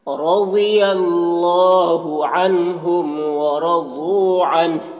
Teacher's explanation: اور اللہ کے لام کو پر پڑھیں گے، کھڑا زبر ہے ایک الف کے برابر کھینچیں گے. عن کے نون میں اظہار حقیقی ہو رہا ہے، اسے جلد پڑھنا ہے. میم میں اظہار شفوی ہو رہا ہے، اسے بھی جلد پڑھنا ہے.